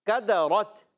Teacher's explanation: کاف زبان کی جڑ اور تالو کے سخت حصے سے ادا ہوتا ہے